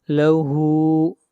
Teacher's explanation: ہا کو کھینچ کر پڑھیں گے 1 الف کے برابر